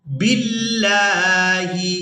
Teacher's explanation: اللہ کے لام کو باریک ادا کریں گے کیونکہ لفظ اللہ کے لام سے پہلے والے حرف کے نیچے زیر ہے